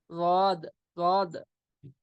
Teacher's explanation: जबान की करवट और ऊपर के दाढ़ों की जड़